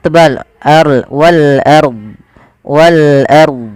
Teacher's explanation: pfal RO di sini rnya kita baca dengan bacaan ro tafkhim ro tafkhim ro tafkhim yaitu rnya dibaca dengan tebal · Ro tafkhim, yaitu ro-nya dibaca dengan tebal, arl wal arb, wal arb.